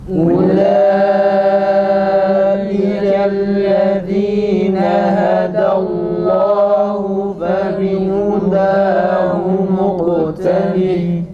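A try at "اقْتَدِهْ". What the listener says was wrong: ومقتده değil u çıksın tekrar.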